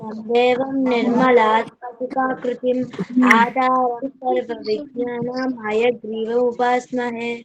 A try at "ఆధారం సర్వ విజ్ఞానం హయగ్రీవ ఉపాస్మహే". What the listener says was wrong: Very good, very good.